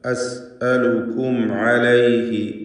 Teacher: അസ് അലുക്കും അലൈഹി, സക്കിനത്തെ മീമും ശേഷം ഐനും വന്നിട്ടുണ്ട്. ഇൽഹാർ ഷഫഈ നൽകി മീമിനെ വെളിവാക്കണം, മണിക്കാതെ ഉച്ചരിക്കണം